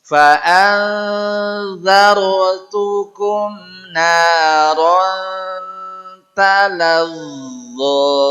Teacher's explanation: Naron talazzo sama dengan za. Zo sama dengan za, ujung lidahnya di ujung gigi seri atas digetarkan